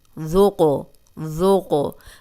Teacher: اب دال جو ہے وہ نرم ہے، سیٹی کی آواز نہیں آئے گی، اور قوف قلقلہ ہے۔